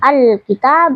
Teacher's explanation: lam sukunnya punya sifat bainiah tak boleh sampai memantul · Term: izhar qamariah